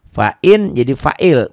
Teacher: bunyi Nun matinya nggak dibaca